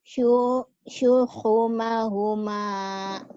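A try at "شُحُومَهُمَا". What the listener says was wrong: Hu-nya panjang.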